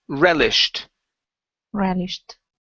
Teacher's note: very nice uh next up is relished okay instead of relished the stress is at the very beginning